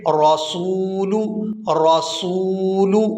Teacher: یہاں آپ سکرین پر لفظ دیکھ رہے ہیں رسول، رسول، یہاں واو ساکن ہے اور اس سے پہلے حرف ہے سین اور اس پر ہے پیش، تو اس سین کو واو مدہ کی وجہ سے ایک الف یعنی 1 سیکنڈ مقدار کے کھینچ کے ادا کریں گے، رسول، رسول۔